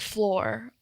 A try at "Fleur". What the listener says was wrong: As in like sweep the floor. It's like fleur. It's FLEUR, so probably... I remember wasn't it going to be like French? French fusion? So that's probably what it is.